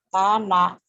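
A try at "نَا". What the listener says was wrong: Nggak ada yang panjang.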